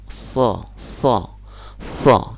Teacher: so itu sama dengan sa posisinya tapi lidah belakang atau lidah agak ke dalamnya dinaikkan. So, so, so, lidah belakangnya naik.